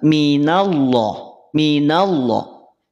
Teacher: Coba lihat huruf nun betul enggak sifatnya istifal betul pangkal lidah tidak naik artinya tipis